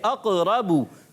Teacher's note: با پر پیش آنے کی وجہ سے با کو ہونٹ گول کر کر ادا کریں گے, اور بغیر کھینچے بغیر جھٹکا دیے معروف بھی پڑھیں گے.